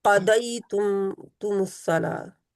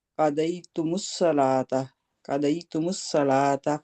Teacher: قا موٹا ہے اور دئی بھی موٹا ہے، دال نہیں ہے اسے پڑھنا